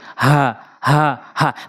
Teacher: হা বলতে হবে হলকের শুরু থেকে একদম নর্মালি